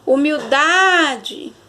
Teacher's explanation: ela tem 4 sílabas e a penúltima que é o dar ela é mais forte tá a sílaba tônica vai estar na penúltima a palavra pétala